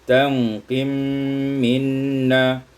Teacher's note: Pada ayat 126 tanqimu minna, idghamul mim fil mim, diidghamkan mim pada mim menjadi tanqim minna.